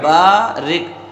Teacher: با کو ایک الف کے برابر کھینچنا ہے